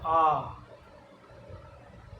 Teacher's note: तो विवर्त का मतलब है जिस स्वर का अपन उच्चारण करते हैं इसमें अपना मुख है वो सर्वाधिक खुलता है। अच्छा, आ, जिसमें मुख की आकृति है वो सर्वाधिक खुलती है वो विवर्त होता है। आ यानी जो है वो आ है विवर्त श्रेणी में शामिल किया जाता है।